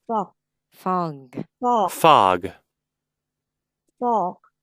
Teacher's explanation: g á nó để cái vị trí giống kh vậy đó nhưng mà nó là âm hơi âm rung